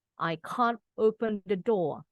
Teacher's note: kalau orang Inggris R-nya nggak kedengeran di belakang.